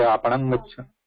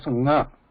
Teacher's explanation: So, in place of ma, I am hearing this nga